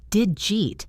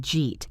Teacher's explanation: Did meets the Y sound in U. They combine to make a J sound. Did you becomes did jaw and then we connect it to eat.